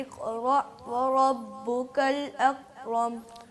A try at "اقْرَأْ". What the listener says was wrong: قاف کا قلقلہ صحیح نہیں ہوا.